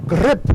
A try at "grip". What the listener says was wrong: with the rolled R, not just grip.